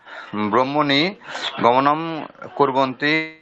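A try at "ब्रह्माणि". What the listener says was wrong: বহুবচনের উচ্চারণটা ব্রহ্মাণী হবে, মানে একটা আকার আছে, হ্যাঁ, আকারটা স্পষ্ট উচ্চারণ করতে হবে। নাহলে নাহলে কি বলুন দেখি, দ্বিবচন আর বহুবচনের মধ্যে উচ্চারণের পার্থক্য বোঝা যাচ্ছে না। দ্বিবচনটা কি আছে, ব্রহ্মাণী, বহুবচন ব্রহ্মাণী।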